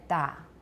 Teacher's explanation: And then da for the T sound with no aspiration